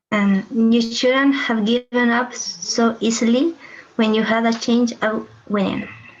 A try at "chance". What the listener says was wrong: Chance of winning, a chance. Chance. It's not change, it's chance of winning.